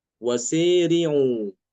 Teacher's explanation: Imam Aduri mengimalahkan alif setelah sin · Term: dimalahkan